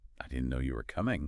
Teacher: If you say it in a completely flat tone, it might sound a bit well robotic or like you don't really care. But try saying it with a slight emphasis, a lift in your voice on no and coming.